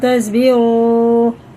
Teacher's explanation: دیکھو واو ساکن سے پہلے پیش ہے تو الٹے پیش کی طرف کھینچ کے پڑھیں گے